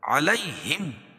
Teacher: یا ساکن سے پہلے زبر ہو تو یالین ہوتا ہے اس کو نرم آواز کے ساتھ جلدی ادا کریں گے